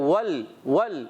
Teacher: वाव को लाम से मिलाना है और होठों को गोल करना है